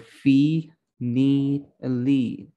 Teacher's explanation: The front word E vowel sound is a little bit relaxed in MLE, but so the tongue isn't quite far from the front, like the word fee, need, lead.